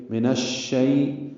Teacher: اب جو شین میں دیکھیں منہ میں آواز پھیل رہی ہے, اس کو تفشی کہتے ہیں